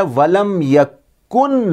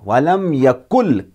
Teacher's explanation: کاف کو ملائیں گے لام کے ساتھ